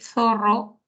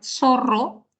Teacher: usar el interdental que sale o se produce a partir de la colocación de la lengua entre los dientes, solemos pronunciar zorro, que es cuando la lengua está un poquito más arriba de los dientes y es el alvéolo, ¿no? Entonces, esa es una marca, por ejemplo, del castellano del Perú, a comparación de otros castellanos de otros países.